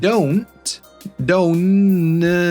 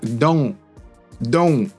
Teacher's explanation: For example, when this N sound exists and we're going to glalilize the T at the end of the word, the N, the front N actually becomes at the back like in sing, not sin